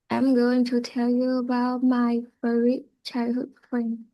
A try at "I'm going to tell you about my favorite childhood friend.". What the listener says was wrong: Good, perfect.